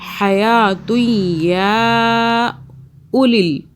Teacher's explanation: آپ نے او نہیں کرنا، کھینچنا نہیں، واو آ رہا لیکن اس واو کے اوپر جزم موجود نہیں ہے